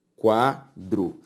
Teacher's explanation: a sílaba tônica de quadro qua